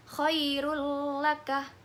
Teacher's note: Cara membacanya yaitu memasukkan pada huruf sesudahnya dan dibaca tanpa mendengung. Jadi bacaan nun sukun atau tanwin ini hilang dan lebur dengan huruf sesudahnya dengan mentasydidkannya · Huruf idgham bila guna di sini ada 2, yaitu lam dan ro. Cara membacanya yaitu memasukkan pada huruf sesudahnya dan dibaca tanpa mendengung.